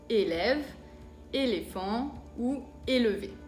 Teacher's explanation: Que es un sonido cerrado, más o menos la misma E que en español